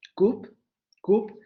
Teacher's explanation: tenemos la vocal posterior cerrada labializada, cup, cup, que por ser sílaba trabada, tenemos la consonante aquí al final, también se va a relajar con el fonema.